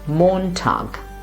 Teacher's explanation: Since it's a German word, the stress is in the beginning.